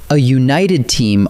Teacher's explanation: united starts with a y sound, like you